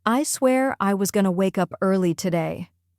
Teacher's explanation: That gonna, instead of going to, immediately makes it sound more natural.